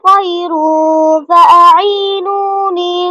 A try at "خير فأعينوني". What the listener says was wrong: এখানে এই যে ফায়ের গুণাটা খেয়াল করেন, খয়রুন হয়ে গেছে, ফায়ের গুণাটা গোল হয়ে গেছে, খয়রুন ফা, ফায়ের মাখরাজে কি গুণা করেন, খয়রুন ফাআইনুনি,